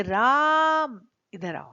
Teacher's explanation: पर जब हम किसी व्यक्ति को दूर से पुकारते हैं तब संबोधन पद के अंतिम वर्ण को हम थोड़ा खींचते हैं तो उसको हम तीन मात्रा का समय लगाकर बोलते हैं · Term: प्लुत स्वर